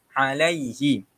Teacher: Okay, itu adalah madlin. Lam ya mati di atas lay, bukan le.